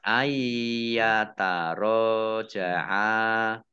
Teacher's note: Ya, idgham bi gunnah masuk dengan mendengung, yaitu mendengung ya. Nunnya tidak dibaca, langsung masuk ke huruf ya.